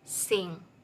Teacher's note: These consonant sounds are produced when the back of the tongue touches the soft palate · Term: velar sounds